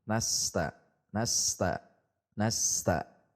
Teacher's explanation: Kuncinya adalah dengan tidak melepasnya bunyi es sebelum mengucapkan ta. tahan nasta nasta nasta tidak nasta nasta dihentak karena huruf sin sifatnya mengalir. · Kita tahan saja sin-nya supaya mengalir. Jangan lepas bunyi es sampai kita mengucapkan ta. · Iyyaka nasta, huruf sin mengalir sehingga tidak boleh terputus